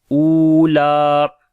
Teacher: سے پڑھیں گے، صحفل، اور لام کے اوپر صفت توسط ہوگی، او کو لمبا کریں گے، واو مدہ ہے، لام کو بھی لمبا کریں گے، کھڑی زبر ہے